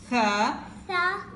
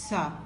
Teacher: There is no whistling sound in Tha.